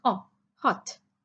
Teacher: o is not giving its actual sound is not sounding like its name oh but it is sounding very short